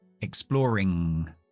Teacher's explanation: siempre es la n velar tapamos atrás